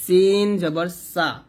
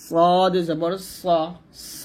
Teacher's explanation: এখানে সিন পাতলা সদ মোটা